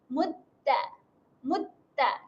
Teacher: Untuk huruf ta bertanda tanda sabdu, dia tiada sifat berangin. Jangan bunyi mutta, mutta. · Kalau kita letak tangan kat depan mulut, dia tak ada angin keluar lah.